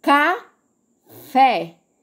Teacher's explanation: vocês viram que eu dei uma pausa para falar a segunda sílaba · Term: duas sílabas